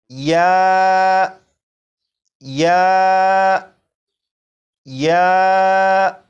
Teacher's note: زبان اوپر تالو کی طرف اٹھے گی ضرور، لیکن زبان تالو کے ساتھ چپکے گی نہیں، بلکہ زبان اور تالو کے درمیان فاصلہ ہوگا، اور فاصلہ شین کی بنسبت زیادہ ہوگا